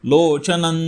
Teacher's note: न वरती अनुस्वार आहे पुढे न हे अक्षर आहे त्यामुळे अनुनासिक न